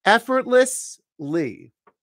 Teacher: Because the word effort ends with a T, but it goes into a voiced L, we sort of put a stop on that T and we don't pronounce it fully.